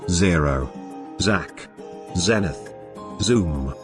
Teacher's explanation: Their ZU sound is a voiced alveolar fricative sound. It is voiced because it involves the vibration of the vocal cords in the process of its articulation. It is usually voiced, but in some contexts, it is weakly produced due to lack of an additional puff of air in its articulation, aspiration.